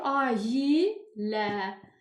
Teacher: Ailə sözünün tələffüzündə uşaqlar a ilə i hərfinin ortasında y hərfi artırılır. Olur ayə. Nailə sözündə də yenə ortada y hərfi artırılır.